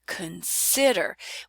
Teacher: we save up our time and energy for the second syllable in consider, and we kind of gobble up that first vowel and we reduce down to schwa.